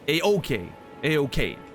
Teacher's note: Make sure you stress the second syllable, not the first.